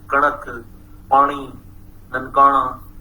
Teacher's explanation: Here we have retroflex nasal sound